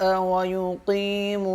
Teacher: ویقی 1 الف کے برابر یا کو کھینچیں گے